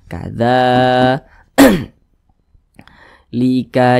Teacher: ini ada Alif kecil yang berdiri ya makanya dza dibaca panjang Mad Thobi'i panjangnya dua harakat atau kira-kira dua ketukan